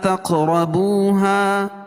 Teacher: فلا تق قاف پر قلقلہ اور را کو پر پڑھیں گے